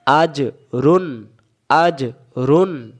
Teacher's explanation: এখানে লুকানো নুন সাকিনের পরে পাওয়া গেছে। তা লুকানো নুন সাকিনটাকে স্পষ্ট করে বলতে হবে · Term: ইজহার